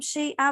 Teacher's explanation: اگر ہم رکیں یہاں پہ دو زبر پر تو ایک زبر کے ساتھ الف پڑھا جاتا ہے